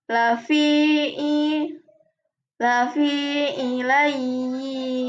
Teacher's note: Panjang bacaan mad tamkin yakni sejumlah dua harakat.